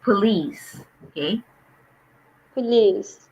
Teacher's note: so the stress is on the second syllable police